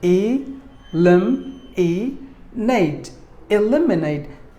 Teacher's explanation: We have to stress the second syllable. Lim should be given more volume than the rest of the syllables.